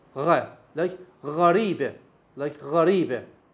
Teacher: The airflow is severely obstructed, closed, so, and there is a little space for the air to go out. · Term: fricative sounds